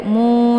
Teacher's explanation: mu dibaca panjang ada Wa sukun sebelumnya harakat dhammah ini dinamakan dengan Mad Thobi'i Zahir dibacanya panjang 2 harokat nah